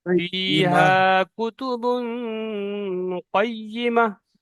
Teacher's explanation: কই ই মাহ তাড়াতাড়ি বলতে হবে, টান দেওয়া যাবে না